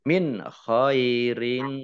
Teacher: Nun sukun bertemu dengan huruf kha bacaan izhar dibaca jelas